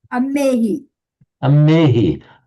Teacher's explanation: to some people, it wouldn't be natural to pronounce a h after the m